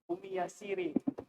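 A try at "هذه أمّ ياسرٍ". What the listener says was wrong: Ummi yasiri apa yasirin? Rin. Kenapa rin? Karena karena nama laki-laki dan mudhof ilaih ya. Ummi kenapa kasroh? Ummi kenapa kasroh? Kan nggak ada huruf jar. kalau mudhof nggak harus kasroh.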